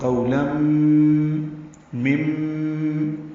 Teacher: تنوین کے بعد میم آنے کی وجہ سے ادغام ہے، ادغام ناقص ہے غننے کے ساتھ. قولم مم، یہ میم مشدد ہے، اس پہ غنہ ہوگا